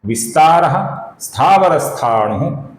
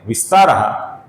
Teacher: विस्तारा का जो विसर्ग है इसके आगे स्थावर का स आया हुआ है। इस कारण से इस विसर्ग का हम हल्का सा स अपूर्ण स ऐसा उच्चारण करते हैं